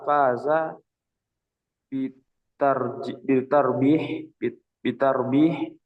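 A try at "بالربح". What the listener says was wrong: nggak ada rohnya, nggak ada taknya. Birribhi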